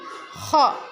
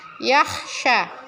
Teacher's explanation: Bunyi kho lebih mendesis dengan tekanan dari perut.